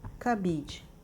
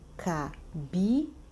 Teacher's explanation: o bi é a sílaba tônica, é a sílaba mais forte